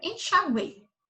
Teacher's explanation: aí eu tenho três logo na palavra enxaguei que eu tenho a semivogal u a vogal e semivogal i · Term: tritongo